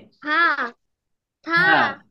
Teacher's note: হালকা বাতাস বাহির হবে জিহ্বার আগা সামনের উপরে দুই দাঁতের আগার সঙ্গে লাগিয়ে